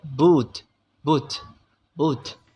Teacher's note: common in Wing images the lips are simultaneously branded and protruded the close back vowel results · If the tongue body is raised as close as possible at the back of the mouth, just short of producing a velar consonant, and as is common in languages, the lips are simultaneously rounded and protruded. The closed back vowel results, which is similar to the vowel of boot, boot, boot.